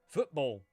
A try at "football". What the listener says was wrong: I think I heard a T in there.